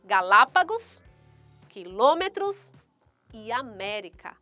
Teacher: a sílaba tônica dessas palavras encontram-se na antepenúltima sílaba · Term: proparoxítonas